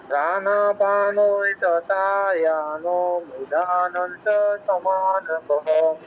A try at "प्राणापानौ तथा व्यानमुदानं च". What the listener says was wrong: ঠিক আছে, ও আর ইও ফলা এই দুটোর উচ্চারণটা আরও একটু ঠিক করতে হবে।